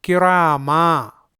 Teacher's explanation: وقف کرنے کی صورت میں یہ تنوین گر جا رہی ہے اور اس کے بجائے یہ الف پڑھا جا رہا ہے